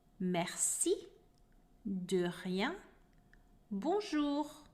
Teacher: the letter is not produced by the center of the tongue like in english or the tip of the tongue like in spanish or in italian but the sound comes from the very back of your tongue